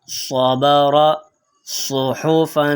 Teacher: صاد کی آواز موٹی اور سیٹی والی ہوتی ہے